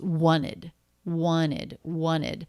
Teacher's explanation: This first T totally dropped. That's pretty common in this word because it comes after an N. Lots of other people will do that.